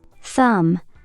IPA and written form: θʌm (thumb)